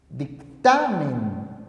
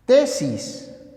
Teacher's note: La mayor fuerza de voz se encuentra en la penúltima sílaba. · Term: graves o llanas